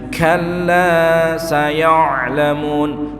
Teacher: Huruf ainnya juga masih banyak yang belum mengalir suaranya.